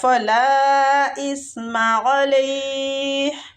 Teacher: فلا پہ جو مد ہو رہی ہے مد جائز منفصل ہو رہی ہے، اس کو کھینچنے کی مقدار بھی 4 حرکات ہے۔ اسم علیہ، سا جو ہے یہ نرمی والا حروف ہے، ٹھیک۔